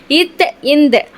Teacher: நாவின் நுனி மேல்வாய் பல்லின் அடி